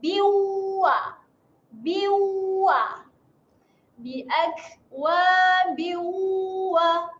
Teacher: tanwin selari berjumpa dengan huruf waw. Kita bacakan dengung 2 harakat dan bersedia muncungkan mulut sebab berjumpa dengan huruf waw.